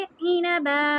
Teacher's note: با کو 2 حرکہ لمبا کر دیں گے